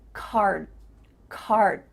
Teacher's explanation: your mouth is making the shape of that D sound, but it's not making the vibrations happening. You're not actually making a D sound, but your mouth is making that shape. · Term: cut off the